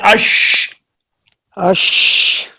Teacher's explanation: جب اش کہیں گے تو آواز منہ کے اندر پھیل گئی ہے، وزن نہیں پڑا، آواز لگی وہیں پہ ہے لیکن آواز پھیلی ہے. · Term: تفشی